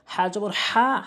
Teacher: হাটি হলকের মাঝখান থেকে চাপ দিয়ে বলবেন, ছোট হা বললে কিন্তু অর্থ চেঞ্জ হয়ে যাবে, ভুল উচ্চারণ।